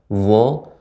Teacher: termasuk sifatnya adalah rokhawah ya, makhrajnya mengalir